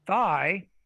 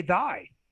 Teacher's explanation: they're produced exactly the same, right? The only difference is the state of the glottis.